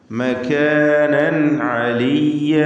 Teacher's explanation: വറഫഅനാഹു മകാനൻ അലിയ്യ, മകാനൻ, നൻ തൻവീനിൻ്റെ നൂനിൻ്റെ തൻവീനിനെ ഇൽഹാർ ഹൽക്കി നൽകി മണിക്കാതെ വെളിവാക്കുക